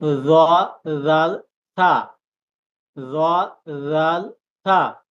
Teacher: জিহ্বার আগা সামনের উপরের দুই দাঁতের আগার সাথে লাগিয়ে উচ্চারিত হয়